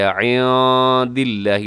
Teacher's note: تو ابھی تھوڑی دیر پہلے میں نے اس جو قانون تھا تجوید کے، اس کو میں نے آپ کے سامنے بیان کیا تھا کہ نون ساکن تنوین کے بعد جب حروف حلقی آتے ہیں تو اظہار ہوتا ہے، تو یہاں بھی اظہار ہے، من عِنْدِ اللَّهِ، من عِنْدِ اللَّهِ. عین کا خیال رکھیے گا، نون ساکن کے اندر یہاں اخفا بھی ہے، عِنْدِ اللَّهِ، لفظ اللہ باریک ہے.